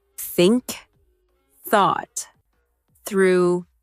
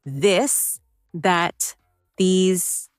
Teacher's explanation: Put your tongue between your teeth and push air out for think. For this, your tongue touches the same position, but with your voice turned on.